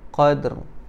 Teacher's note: jangan mati ataupun berhenti pada huruf dal. Kita kena waqaf berhenti pada huruf ra. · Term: qalqalah